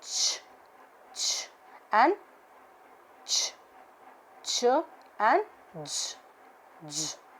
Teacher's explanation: The fricatives are affricates, a combination of a stop followed by a fricative. An explosion, important thing is an explosion with a slow release.